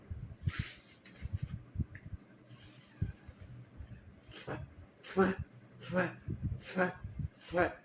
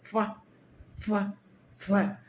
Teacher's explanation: दोनों होठों को बंद करके बाहर हवा निकालना, फ फ फ फ फ। होठ ऊपर जा रहे हैं, आपके दांत भी आगे थोड़े ऊंचे उठ रहे हैं और दांतों के बीच में से होठों के बाहर हवा निकले, फ फ फ। ज्यादा रोल किसका है, इसके अंदर नीचे वाला होठ और नीचे वाला जो दांत है उनका काम है, ऊपर वाला हिल नहीं रहा।